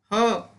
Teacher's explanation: ह व्यंजनाचा उच्चार करताना फुफुसातील हवा तोंडावाटे जोरात बाहेर फेकली जाते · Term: महाप्राण